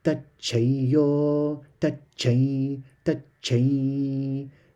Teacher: when the anuswar is followed by a word that starts with a ya, then that m sound also changes to a sound that resembles ya